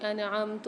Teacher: نون ساکن کے بعد عین آ رہا ہے، یہاں اظہار کر کے پڑھیں گے، اظہار ہلکی والا قاعدہ ہو رہا ہے۔